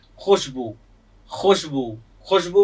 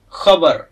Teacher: यह ख से अधिक गहरे स्वर में गले से निकलने वाली ध्वनि है